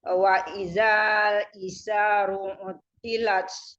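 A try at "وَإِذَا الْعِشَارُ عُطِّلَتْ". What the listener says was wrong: Wa izal, jangan kepanjangan.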